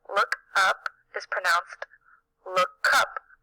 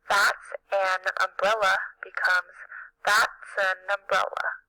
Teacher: the next word begins with a vowel sound when this happens we pronounce the words as if the consonant sound has moved from the end of the first word to the beginning of the next word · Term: consonant vowel linking